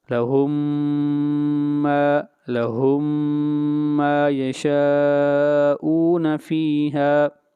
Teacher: میم ساکن ہے اور اس کے بعد جو میم آ رہی ہے ہم نے پہلی میم کو یہاں پر دوسری میم میں ملا دیا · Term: ادغام